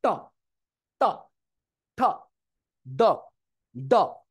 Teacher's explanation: পুরা জিহ্বার আকারটা পুরা মাঝখানে লাগছে মাঝখানে আগেও না পরেও না পুরা মাঝ বরাবর তো আমরা নাম দিয়েছি কি বলতো মূর্ধা নাম দিয়েছি কি বলতো